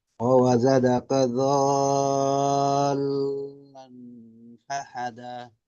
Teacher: আর তানমিনের পরে হরফে ইকফা ফা জালান আসছে, এটা গুণা করতে হবে।